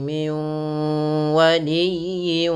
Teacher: pada lafal miwa masukkan bunyi nun ke waw. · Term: idgham bi gunnahnya